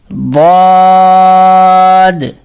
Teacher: اچھا یہ جو ضاد ہوتا ہے زبان کی کروٹ اور اوپر کی جو داڑیں ہوتی ہیں تو زبان کی کروٹ کو اوپر کی داڑوں کی جڑ پہ لگاتے ہیں تو ضاد پڑھا جاتا ہے. نہ دواد کرنا ہے نہ زواد کرنا ہے، یہ دونوں نہیں کرنا ہے.